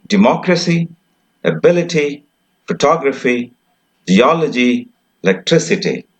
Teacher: the stress will be on the ante penultimate syllable